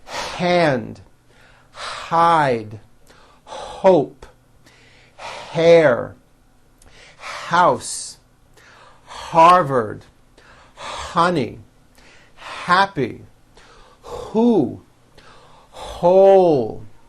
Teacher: When an H is at the beginning of a word, it is pronounced with a strong, loud air stream. · putting in that h sound with a loud airstream